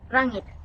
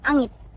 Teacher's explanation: Kalau orang yang bertutuan Kedayan, dia akan sebut rangit or angit. Sebab dia boleh silent R.